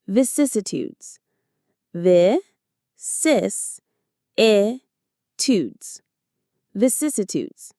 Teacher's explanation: The stress is on the second syllable. Cis. Vicissitudes.